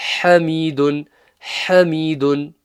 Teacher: The ha needs to be from the middle of the throat, pushed out from the middle of the throat.